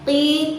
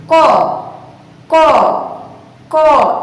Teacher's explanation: pelafalan huruf qaf yang dikeluarkan melalui pangkal lidah mengenai langit-langit atas